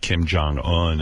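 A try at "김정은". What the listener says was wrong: Kim Jong-un. Jong, not like John, Jong.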